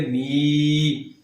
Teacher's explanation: یا مدہ کی تعریف ہم نے پڑھی تھی کہ یا ساکن ہو اور اس سے پچھلا جو حرف ہے اس کے نیچے زیر ہو تو وہاں پر یا مدہ بن جاتا ہے۔ یہاں پر یا مدہ ہے می، یہ تو اس لیے اس کو ہم نے لمبا کرنا ہے، می اتنا نہیں بلکہ می۔